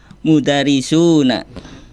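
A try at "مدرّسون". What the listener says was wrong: Bertasydid ya.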